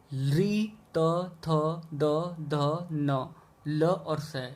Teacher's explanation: इनका उच्चारण स्थान है दंत, और इन्हें कहते हैं हम दंत्य